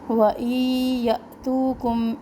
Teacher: حمزہ پہ جھٹکا دینا ہے کیونکہ یہ الف نہیں ہے، ساکن آگے اس کے اوپر، تو یہ اس کو ہم جھٹکے سے پڑھیں گے.